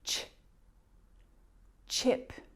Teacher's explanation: ch is a combination of the T and Sh